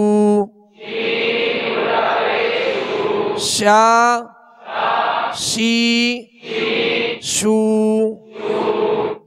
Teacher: شین کو جب ادا کریں گے تو آواز اس کی شین کی آواز منہ میں پھیلتی ہوئی محسوس ہو